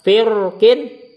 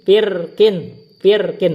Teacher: Nah, firkin ini ro-nya boleh dibaca tebal, firkin, karena ada huruf isti'lanya, atau dibaca tipis, firkin boleh ini.